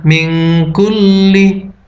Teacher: Nun mati dibaca samar. Hukumnya adalah ikhfa, karena nun mati bertemu dengan kaf.